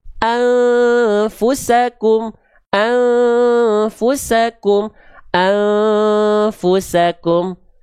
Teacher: Dengungannya pas, samar dengungnya enggak terlalu kuat, lalu dia enggak tergesa-gesa.